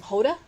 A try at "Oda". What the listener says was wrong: Oda, no H.